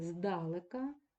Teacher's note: посередині падає наголос на е